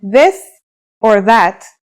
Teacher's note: pronunciation is a voiced sound the as in this or that it's pronounced with the tongue between the upper and the lower teeth